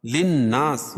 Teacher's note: نون مشدد ہے، غنہ ہوگا